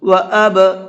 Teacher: با کے اندر قلقلہ کریں گے، ڈبل کر کے پڑھیں گے ہلکا سا آواز کو